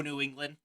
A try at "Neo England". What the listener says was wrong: So that sounds like you're saying New England.